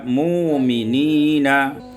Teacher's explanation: ibdalul hamzati wawan, ditukar hamzah dengan waw sehingga kita baca mu'minina.